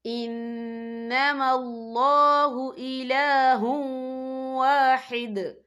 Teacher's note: اور آگے دیکھیں واحد، یہاں پہ آپ کو چھوٹی سی توئیں لکھی نظر آ رہی ہے تو یہ فعل مطلق کی علامت ہے تو یہاں پہ ٹھہرنا بہتر ہے. وقف کی صورت میں دال ساکن ہو جائے گا.